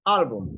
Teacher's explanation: Yes, the stress is in the first A.